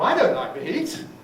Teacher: Don't like the heat is all repeated. Nucleus on I. In this particular construction, it probably would have a full rise, negative.